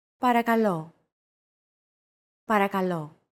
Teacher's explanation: Don't forget that words get accentuated in Greek, so make sure to stress that final syllable with the accent mark.